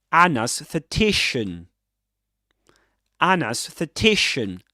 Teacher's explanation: Double stressed word. Main stress on t secondary stress on a